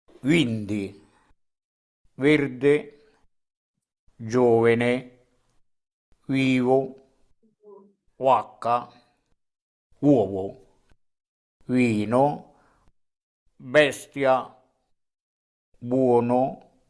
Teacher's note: the Latin V is consistently the English W sound at beginning of words, like the word for green, verde, as well as intervocalically, like nove. And remember how wine is how we pronounce it in English, of course, with that W sound, vino, in Montellese.